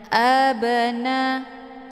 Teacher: ba sukun yang terdapat di pertengahan kalimat ini dinamakan dengan qqal cara bacanya banya dipantulkan dengan pantulan ringan · Cara bacanya, ba-nya dipantulkan dengan pantulan ringan. Abna, keluar bunyi be sekedar saja. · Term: qalqalah sughra